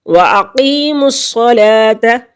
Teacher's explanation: لام پر کھڑی زبر ہے، ایک الف کے برابر اس کو لمبا کھینچیں گے